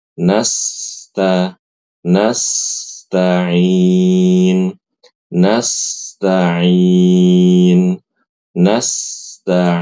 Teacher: Kemudian pada kata nastainu, nah Ibu-ibu ketika membaca nastain pastikan huruf sin itu mengalir ya. Pastikan huruf sin sukunnya itu mengalir. Jangan diputus.